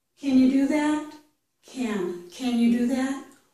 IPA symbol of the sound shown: æ